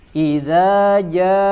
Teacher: setelah jim dibaca 2 harokat, setelahnya ada hamzah, maka itu kita baca lebih dari 2 harokat, ya, lebih tepatnya kita baca 6 harokat, ya, karena ada mad setelahnya huruf hamzah, ya, dalam satu kalimat, ya, kita kenal dengan mad muttasil atau mad wajib muttasil, sehingga kita baca menjadi 6 harokat.